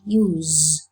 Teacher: when you use the verb use in isolation he pronounced it use with the voiced fricatives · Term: voiced fricative z